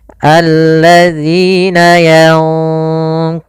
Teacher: nunnya disamarkan kepada huruf qf dan qaf termasuk huruf yang tebal maka ikhfanya juga ikhfa yang kita tebalkan